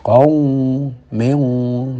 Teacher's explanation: kalau ada nun mati bertemu qaf, maka ikhfa'nya, dengung ikhfa'nya menebal